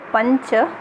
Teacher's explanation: cha belongs to the palatal group and therefore the nasal that we combine with cha will also belong to the palatal group. उसी तरह जब पंच शब्द में च के साथ अनुनासिका जोड़ते हैं तो वो भी च वर्ग का ही होगा, माने तालुज होगा.